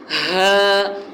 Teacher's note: میں نے آپ کو بتایا تھا کہ ہا اور ہا میں ان دونوں الگ الگ ہیں، ان کی پریکٹس کرنی ہے کہ ہا کا الگ جو اپنا حلق والا حصہ ہے وہ وسط حلق ہے، اور ہا کا جو ہے وہ اپنا اقصی حلق ہے۔ ہا جو ہے وہ اقصی حلق سے نکلتا ہے، اور ہا جو ہے وہ وسط حلق سے نکلتا ہے، یعنی حلق کے درمیان والے حصے سے۔